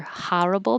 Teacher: this word can be pronounced with more of an ah like horrible more East Coast